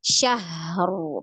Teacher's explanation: Bukan syahru ya. Syah ada ha ya. Ha sukun. Nah, dialirkan ya. · Itu ada rohwa ya, ha. Ya, itu ada rohwa. Jadi dialirkan dulu suaranya. Syahru. Baru masuk ro sukun.